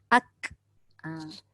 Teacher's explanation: Jadi bila kita sebut ak, dia tertahan suara, dia terlepasnya udara. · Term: sifat syiddah